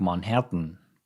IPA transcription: Manhattan